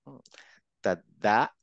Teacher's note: জীবটা দাঁতের গোড়াতে লাগবে